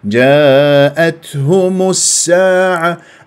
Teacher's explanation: اللام في الساعه شمسيه لانه السين مشدده بعدها السين صفير